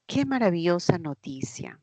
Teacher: Esta vendría a ser una exclamativa y las exclamativas tienen inflexión descendente.